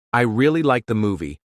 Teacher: For example, if you say, I really like the movie, with a rising tone at the end, it sounds like you're excited.